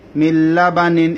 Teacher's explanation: নুনটা লামের মধ্যে ঢুকে গেছে গুন্না ছাড়া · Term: ইদগামে বেলাগুন্না